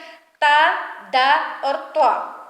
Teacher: جس طرح زبان کے سرے سے جو ہے دانتوں کے سرے سے زبان لگے تو ثا ذا ظا ادا ہوتے ہیں، اسی طرح انہی دانتوں کی جڑوں سے جب زبان لگے گی تو تا دا اور طا۔ زبان جب سامنے والے دانتوں کی جڑوں کے ساتھ لگے گی تو تا دا اور طا ادا ہوتے ہیں